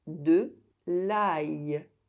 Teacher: When IL is at the end of a word, the [j] sound is pronounced with the previous vowel sound as one single sound. They are pronounced in one breath in the same syllable.